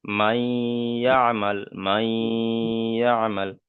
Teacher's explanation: নুন সাকিনের পরে ইয়া। নুন সাকিনের পরে হরুফে ইউ মিনের চারটি অক্ষরের মধ্যে থেকে ইয়া এসছে, তাই নুন সাকিনকে একালিপ পরিমাণ গুণনা করে পড়তে হবে। একে ইদগামে নাখিস বলা হয়।